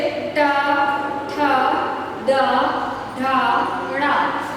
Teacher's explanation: जब हम इन वर्णों का उच्चारण करते हैं तो हमारी जीवा जो है मूर्धा को स्पर्श करती है।